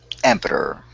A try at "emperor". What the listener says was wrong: Perfect.